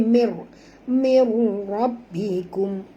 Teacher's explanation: masukkan bunyi nun ni terus ke dalam ra tanpa dengung ya. Ini adalah ya, apa tu, idgham bila gunnah, idgham tanpa dengung.